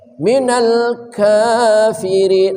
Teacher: Kaf berdesis wastak ya. Wastakbara ta ya, ta juga berdesis hamas